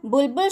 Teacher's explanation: बुलबुल शब्द में अंतिम वर्ण है ल, तो इसके पहले का शब्द है बु, तो बलाघात बु शब्द पर दिया जाएगा।